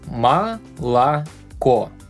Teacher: The thing about O is it sounds like A when it's not stressed.